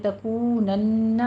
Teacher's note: تکونن میں واو مدہ ادا کرتے ہوئے آگے نون مشدد ہے، غنہ واجبہ کرنا ہے، 2 کاؤنٹ کرنے ہیں۔